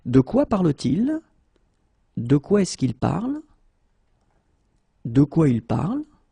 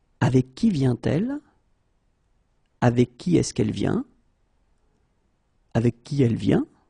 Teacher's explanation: raise our voice at the end because there are questions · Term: raise my voice